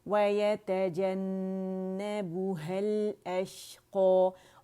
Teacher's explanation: क़ौ मोटा हो जाएगा क्योंकि अलिफ मकसूरा इसकी आवाज़ को खींच रहा है